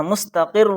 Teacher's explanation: یہاں پر رائے مشددہ ہے اور اس پر پیش آیا ہے، ڈبل پیش آیا ہے اس لیے اس کو لانگ کر کے موٹا کر کے پڑھنا